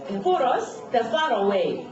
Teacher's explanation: for가 R로 끝났지만 뒤에 있는 U에서 연음이 돼서 결국은 모음 앞에 온다 해서 이게 발음이 되는 거예요.